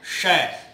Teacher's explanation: तो जब हम इसे बोलते हैं शय, तो हमारी जीभ की जो नोक है वो उठ के थोड़ा और पीछे जाती है, वो स्थान होता है मूर्धा, तब हम बोल पाते हैं शय।